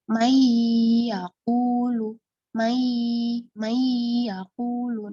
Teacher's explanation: cara membacanya dengan suara dengung yang nyata dan jelas dari pangkal hidung Seraya ditahan kira-kira ukuran dua harakat atau ketukan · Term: gunah aridah, gunnah aridoh